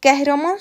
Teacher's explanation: qəhrəman sözündə Ə saiti incə, A saiti qalın saitdir.